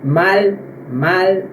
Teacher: ele nunca vai ter o som de U, galera. Ele sempre vai ter o som de L mesmo, como na palavra mal, mal.